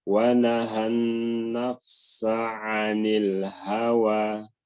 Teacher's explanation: Ditekan pada ain. Sin jangan dulu ditekan.